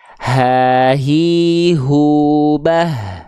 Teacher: H besar itu dilafalkan dari tenggorokan yang paling bawah nih, area yang berwarna ungu.